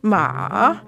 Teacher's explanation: the third tone in Mandarin ma is sort of like a j type pattern